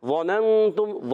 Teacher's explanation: نون ساکن کے بعد تا آ گیا، حرف اخفا میں سے اخفا کا غنہ کریں گے، اور تم میں ہو جائے گا اظہار شفوی۔